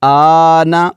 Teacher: اگر حرف مدہ کے بعد سکون جو ہے یعنی اگلا حرف ساکن ہو تو پھر وہاں پر مد لازم کلمی مخفف ہوتی ہے، اور اس کو ہم 3 سے 5 الف تک کھینچ کر پڑھیں گے